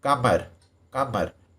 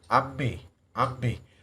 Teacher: आप ट्राई कर सकते हैं कमर, कमर, तो म में देखेंगे उच्चारण के दौरान आपके नाक में वाइब्रेशन होगा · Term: नासिक के व्यंजन